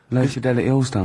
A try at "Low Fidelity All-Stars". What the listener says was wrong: No, it's just you didn't know your mouth wide enough.